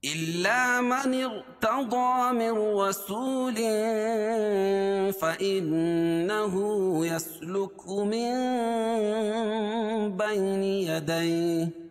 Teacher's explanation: تو یہاں نون ساکن کے بعد با ہے تو اس سے پہلے چھوٹی سی میم آئے گی، تو نون کو میم سے بدل کر غنہ اور اخفا کے ساتھ پڑھیں گے، اس کو اقلاب کہتے ہیں